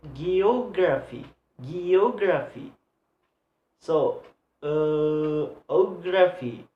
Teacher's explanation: So the stress is placed on the third syllable to the last one.